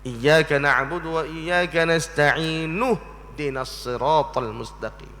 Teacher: Jika kamu mewasalkan nasta'inu, nak sambung tu, tak mau berhenti di nasta'in, nak sambung, nak wasal, tak mau waqaf, maka buangkanlah hamzah wasal, yakni tak akan bunyi dah ihdina.